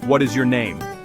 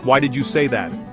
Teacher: Repeat after me with a falling intonation.